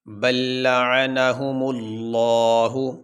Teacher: لفظ اللہ سے پہلے میم کے اوپر پیش ہے، تو اس لیے یہاں پہ آواز کو موٹا کریں گے